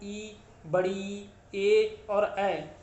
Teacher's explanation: तो अग्रस्वर के अंतर्गत ई, बड़ी, ए और ऐ यही स्वर आते हैं।